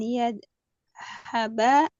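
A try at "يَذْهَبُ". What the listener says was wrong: Oh yadhabah. Berarti yadha bu harus domah.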